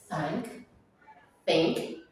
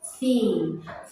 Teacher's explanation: it was basically air passing through the tip of my tongue in between upper and lower tip, right? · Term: voiceless sound